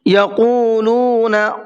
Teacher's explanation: قاف کو منہ بھر کے پڑھنا ہے